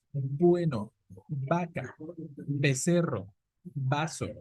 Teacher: tenemos que pegar los dos labios, por eso decimos que es bilabial